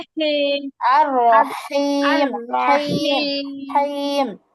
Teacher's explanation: হা হচ্ছে হলকের মধ্যখান থেকে নিয়ে আসার চেষ্টা করবো আমরা, হ্যাঁ। الرحيم আর রহিম, হাইম, الرحيم হাইম, কণ্ঠের মাঝখানে থেকে একটু চাপাইয়া, রহিম।